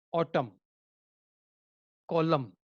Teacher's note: N is silent because it is coming after the M